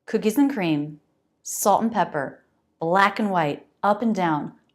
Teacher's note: I'm just making a quick n sound linking the two words